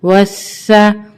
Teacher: واو سین زبر وس, سین زبر سا, وسا. یہاں پہ سین مشدد ہے تو یہاں پہ ہم اس کو سختی کے ساتھ پڑھیں گے اور 2 ٹائم پڑھیں گے, ایک واو کے ساتھ ملا کے اور ایک یہ اٹ سیلف خود.